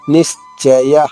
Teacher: సో నీ పైన ఆఘాతం తీసుకుంటూ షా 2 షాలుగా చెప్తూ నిశ్చయ నిశ్చయ. చివరిగా ఉన్న విసర్గ ఉచ్చారణ హ హ్రస్వంగా చెప్పాలి.